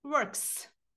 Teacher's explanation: Якщо дієслово закінчується на глухий приголосний к, кт і так далі, тоді ми S вимовляємо як с, works.